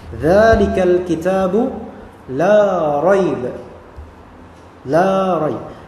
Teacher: Maka ketika fathah bertemu dengan alif dan setelahnya huruf biasa bukan huruf hamzah atau alif, maka dia dihukumi sebagai mad tabi'i atau mad asli, hanya dua harakat.